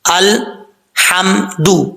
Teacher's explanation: اب ہا کو کلیئر ساؤنڈ پڑھیں گے کیونکہ ہا جس حلق سے ادا ہوتی ہے اس حلق کا تعلق منہ کی طرف ہے، اس لیے ہا کو کلیئر ساؤنڈ پڑھا جائے گا.